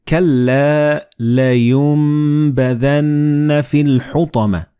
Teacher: And this meme appears in the middle of the word. So the noon and ba, when they follow one another in the same word, you don't pronounce noon or ba, but you pronounce meme